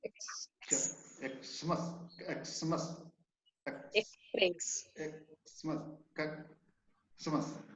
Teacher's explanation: X का उच्चारण हो गया क्या, आधा क और दंत स। X का आधा क और दंत स।